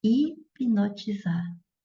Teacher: quando eu falo hipnotizar, aí ela já é uma oxítona, a sílaba tônica já é a última, então, oxítona terminada em R não tem acento.